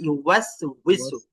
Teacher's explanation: ইউওয়াসউইসু ওয়াওটা যেন গোল হয়, গোল না হলে কিন্তু হামজার জায়গায় চলে যাবে।